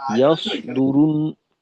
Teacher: সদকে আরেকটু মোটা করা দরকার, অন্যথায় সিনের মতো মনে হয়